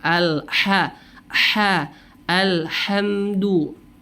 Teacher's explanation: Pada lafaz alhamdu seharusnya pakai ha tipis. Alhamdu, huruf ha ini tempat atau keluarnya makhrajnya adalah di tengah tenggorokan atau wasatul halqa. sehingga kita lebih menekan sedikit tengah tenggorokan kita.